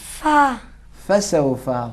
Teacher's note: نیچے کے ہونٹوں سے اوپر کے دان ملائیں گے، ملا کے ادا کریں گے۔